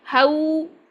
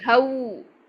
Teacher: गोल हंठों में अदा होता है वाव। तो अगर आपके हंठ पूरी तरह गोल नहीं है आपका लीन भी अच्छा नहीं अदा होगा।